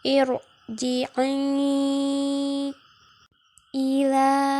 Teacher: Radiyatam mar itu dibaca tebal ro-nya